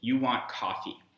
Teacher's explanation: you want coffee, where coffee is this flat level tone. And if English was a lexical tone language, we might have a hypothetical situation where coffee, this flat tone, means coffee.